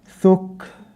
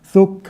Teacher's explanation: It's just literally a breath that's released, small breath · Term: hams